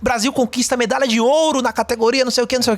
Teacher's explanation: Quando você vê muito jornais, quando vai dar uma notícia feliz, contente, Brasil conquista medalha de ouro na categoria não sei o que. Você pode ver que é um tom ascendente, a pessoa sobe o tom.